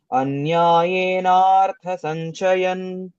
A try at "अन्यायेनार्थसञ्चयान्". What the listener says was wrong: సంచయాన్ యాక్ దీర్ఘం ఉంది అన్యాయేనార్థ సంచయాన్ కామమాశ్రిత్య ఒక్కసారి చెప్పు 10th